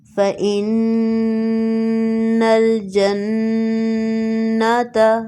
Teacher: دونوں میں نون مشدد ہے، نون مشدد پر غنہ کیا جاتا ہے۔